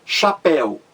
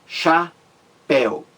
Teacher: A mais forte aí é a última sílaba. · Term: sílaba mais forte